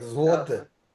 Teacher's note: some people from Poland, they pronounce it as an U sound. And some people pronounce it as a L sound.